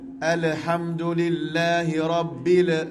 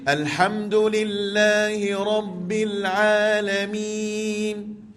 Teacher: Rabbil, di sini lam mati, jangan bunyi melantun lam pula.